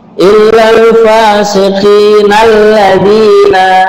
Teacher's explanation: hamzahnya harokatnya jadi hilang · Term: hamzah wasol